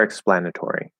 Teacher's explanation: because it's stress we're not reducing it to ter